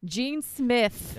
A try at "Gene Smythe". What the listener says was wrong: I think it's Smythe. There's a Y in it.